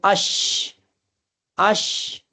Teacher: شین میں ایک صفت پائی جاتی ہے جس کو تجوید کی زبان میں تفشی کہتے ہیں. یعنی شین پڑھتے وقت شین کی آواز پورے منہ میں پھیلنی چاہیے، تو یہ مانا جاتا ہے کہ شین پورا ادا ہوا، یعنی شین کا مخرج پورا ادا ہو گیا، ادائیگی کے اعتبار سے شین مکمل نکلا.